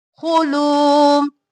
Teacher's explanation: خو موٹا اور لو کو کھینچیں گے، خو کو جلدی سے